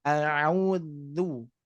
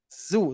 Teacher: di sini huruf Dal ini Bapak Ibu sekalian makhraj huruf dalal keluar dari ujung lidah dengan ujung dua gigi seri atas